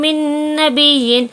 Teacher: یہاں نون ساکن کے بعد نون آیا ہے تو نون کو نون سے ملا کر غنے کے ساتھ پڑھیں گے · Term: ادغام مع الغنہ